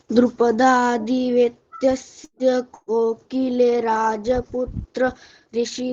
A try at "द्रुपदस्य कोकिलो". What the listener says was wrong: आराम से आराम से आराम से आराम से बोलना है।